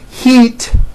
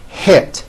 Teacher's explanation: think of the sound e as in heat as being high up and air as in hit as being a little bit lower